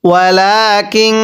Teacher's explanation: নুন সাকিনের পরে যদি ইকফার হরফ এরকম কাফ থাকে তাহলে নুন সাকিনগুলো গুনাহ করে পড়তে হয়।